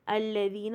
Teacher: زبان تھوڑی سی باہر آئے گی ذال کا مخرج پہ، الذین، اور یا ساکن سے پہلے زیر ہے تو 2 کاؤنٹ ہوئے گا۔